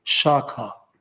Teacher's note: Sanskrit word for branch is shakha, palatal sha